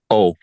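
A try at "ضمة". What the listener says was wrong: Yes, O, but we pronounce it U.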